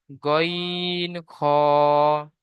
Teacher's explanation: হালাকের বা কণ্ঠনালীর শেষ ভাগ হতে উচ্চারিত হয় গইন খ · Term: 3 নম্বর মাখরাজ